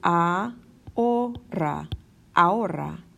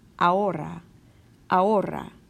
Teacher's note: We kind of ignore that H in the middle.